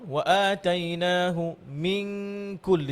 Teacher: জিব্বার গোড়ায় কফ এবং একটু সামনে এগিয়ে কাফ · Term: কাফ এবং কফের গুন্না